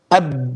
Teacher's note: Okay, like ab. So the makhraj is the shafatain, the 2 lips, and the lips are sealed.